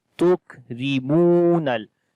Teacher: Kaf we read in light sound. Mim we long due to waw madda. Ra we read in light sound again.